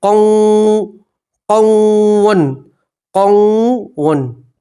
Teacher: تنوین کو واو کے اندر ملا دیں گے اور گنہ کے ساتھ پڑھیں گے